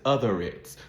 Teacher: If it's followed by a vowel sound, even if it's another word, she says other it's, so that R in other is carried over to the next word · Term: linking R